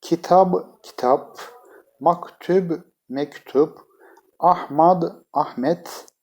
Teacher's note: Arapça kelimelerin sonunda b c d ünsüzleri yoktur değerli arkadaşlar Türkçede p ç t şeklinde söylenmiştir